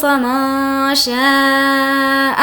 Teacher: یہاں پر نون ساکن کے بعد شین ہے اس لیے اخفا ہوگا اور ہی کو کھینچ کر پڑھیں گے کیونکہ کھڑی زیر ہے.